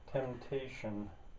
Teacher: the P is not spoken